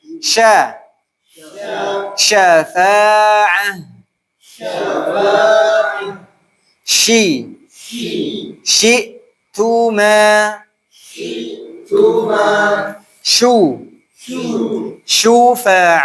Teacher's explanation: Tengah lidah Tengah lidah bertemu dengan langit-langit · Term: syin